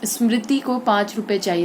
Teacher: स्मृति तो री पर ज्यादा पड़ा, तो ये बलाघात कहलाता है